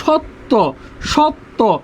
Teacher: স-এর উচ্চারণ হবে তালব্য স